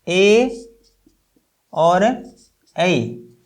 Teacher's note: कंठ और तालु का इस्तेमाल करके हम दो स्वर बोलते हैं, एक ए और ऐ। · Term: कंठ तालव्य